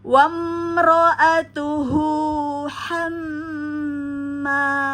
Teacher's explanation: di sini ada hamzah wasol maka abaikan langsung masuk ke mim